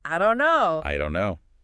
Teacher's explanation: Often the N at the end of don't gets dropped, especially before the N in no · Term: dropped sounds